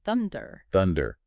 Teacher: thunder has the stress on the first syllable